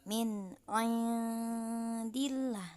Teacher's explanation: Yang pertama, ikhfa akrob adalah bacaannya samar atau dengung, yang mana samarnya bacaan tersebut lebih mendekati kepada bacaan izhar